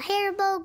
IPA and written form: ˈhærᵻboʊ (Haribo)